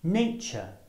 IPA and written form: ˈneɪtʆə (nature)